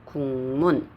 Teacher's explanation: 그럼이 비음이 얘한테 영향을 주게 되는 거예요. 그래서 기억은 뭘로 변환됐죠? 이응으로 변환됐죠. 그래서 국문 요렇게 발음이 된다는 것입니다. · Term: 비음화